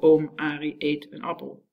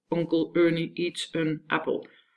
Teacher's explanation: sometimes glottal stop is used before an initial vowel for stressing, for shouting, but it's not good RP.